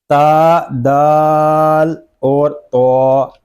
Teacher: ان تینوں حروف کا مخرج ایک ہے، زبان کی نوک اور اوپر کے دانتوں کی جڑ۔